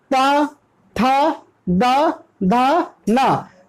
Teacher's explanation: हमारी जो जीभ है वो दांत को टच करते हुए इनको साउंड ला पाती है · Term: दंत वर्ग